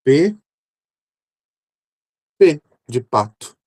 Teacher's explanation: Lábios fechados, né? Sem vibração nenhuma.